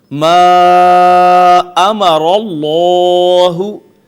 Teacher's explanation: اس کے بعد ما امر اللہ، دیکھیے میم کے اوپر مد ہے، مدات ہم نے ابھی نہیں پڑھی لیکن یہ مد منفصل ہے اور اس پہ توسط کرتے ہیں، اس کو 3 الف جتنا کھینچتے ہیں